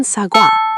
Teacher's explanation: First, wa combines o plus a, making a wae sound, like in sagwa, meaning apple. Your lips start rounded for o, then open for a.